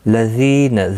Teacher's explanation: زی یا مدہ ہے، 1 الف کی مقدار کے برابر کھینچ کر پڑھیں گے، نہ کو کھینچنا نہیں.